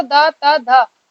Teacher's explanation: तीनों में जीभ आपकी कहाँ टच हो रही है? दांत पे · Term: दंत्य वर्ण